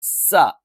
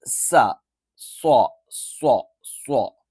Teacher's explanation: സ നമ്മൾ ഉച്ചരിക്കുന്ന സമയത്ത് നാവ് പരന്നാണ് നിൽക്കുക സ്വ ഉച്ചരിക്കുന്ന സമയത്ത് നാവ് എന്ത് ചെയ്യും വളഞ്ഞു കുത്തിയിട്ടായിരിക്കും നിൽക്കുക